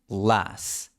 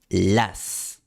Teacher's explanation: la L inglesa se pronuncia con la lengua empujada hacia atrás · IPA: [ɫ]